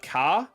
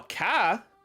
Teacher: For example, ka, read ka, means mug, while ka, read ka, but your voice goes up higher during the word